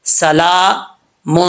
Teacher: سین زبر سا، لام کھڑا زبر، لام کے اوپر کھڑا زبر ہے تو اس کا ایک الف کی مقدار اس کو لمبا کیا جائے گا